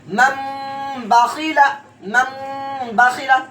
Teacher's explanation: لیکن اس کا ارجا ہم اس طرح نکالیں گے کہ نون ساکن کے بعد حرف با آیا اس لیے اقلاب ہوگا. تنوین نون ساکن کی آواز کے بجائے گناہ کے ساتھ میم کا تلفظ ہوگا